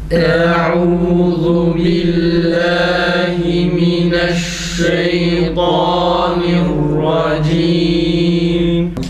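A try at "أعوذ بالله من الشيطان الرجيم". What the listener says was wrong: Eûzu değil, hemzeyi uzatmayalım. Eûzu değil. Eûzu billahi mineşşeytanirracim. Eûzu'nun hemzesini düzeltelim yalnız olmuyor.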